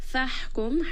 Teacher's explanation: Here when we have a sukun at the ha, make sure you do give it a little bit of air and hams so that it is not dropped. فَحْكُمْ, ha is going to be from the middle of the throat